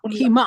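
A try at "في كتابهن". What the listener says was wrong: There should be also a kasra. Fi kitabi hunna.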